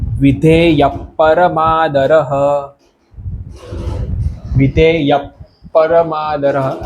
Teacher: આપણે હ આખો નથી બોલવાનો અહિયા ય પછી સીધું જ આ પકાર આવી જશે એટલે વિધે યપરમાદરહ છેલ્લો પાછો આપણે આખો રહ એમ આખે આખો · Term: વિસર્ગ